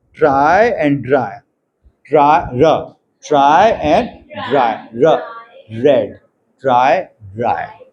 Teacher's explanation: The sound represented by the letter र in English words ट्राई एंड ड्राई, ट्राई र, ट्राई एंड ड्राई, र रेड, ट्राई ड्राई, ठीक है। तो र sound जो है वो post alveolar है। Then we have, मतलब only one है post alveolar, एक ही है र।